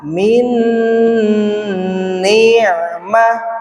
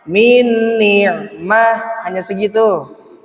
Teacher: Ya itu dengung. Dengung itu masuk hidung dan ditahan.